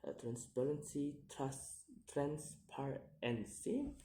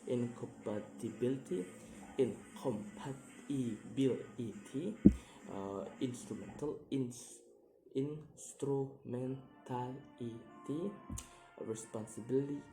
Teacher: place the stress on the third syllables from the last one.